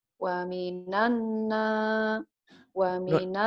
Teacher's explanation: nunnya ini ditahan, ini gunnah namanya ya.